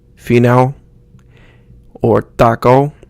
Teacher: The O is pronounced like the beginning of O in open, but we don't want to use the ow sound.